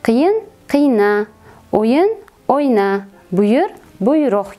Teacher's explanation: Keyingi holatimiz sakkizinchisi, ya'ni qiyin, o'yin, buyur, quvon kabi so'zlarimizga ham a va i qo'shimchasini qo'shganimizda ushbu so'zlar tarkibida ikkinchi bo'g'indagi unlilar tushib qolishini kuzatishimiz mumkin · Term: tovush tushishi